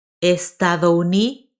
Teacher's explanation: Now, we're going to link estado and uni.